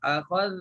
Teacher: lidah akan terkeluar sedikit kan. Makhraj zal lah yang kita belajar.